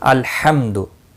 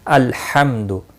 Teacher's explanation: तो यहाँ पर नहीं होना चाहिए, इसीलिए अल्हम्दु, अल का लाम जो है साकिन है, इसको अल यानी इस पर कलकला नहीं होना चाहिए। अल्हम्दु के लाम को या अनअमत के नून को हिलाना गलत है। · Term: सुकून की अदायगी